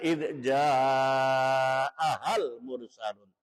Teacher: Ada huruf mad, ada hamzah, satu kalimah. Panjangnya 2 alif setengah atau 5 harokat. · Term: mad wajib muttasil